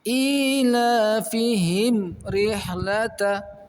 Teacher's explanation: pada huruf mim dalam lafadz ilafihim berhadapan dengan huruf ra, maka dibaca tegas, tidak boleh ditahan